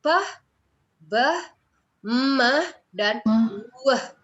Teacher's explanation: bunyi yang dihasilkan di bibir atau kita sebut bilabial